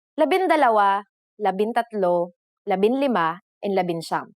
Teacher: However, NG sometimes changes its form depending on the letter that follows it. For the letters D, L, R, S, and T, the G from NG is dropped to make it easier to pronounce.